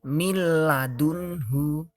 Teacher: Nah, nih salah satu contoh dari idgham bila gunnah, miladunhu ya. Jadi tidak dengung, hanya ditekan saja.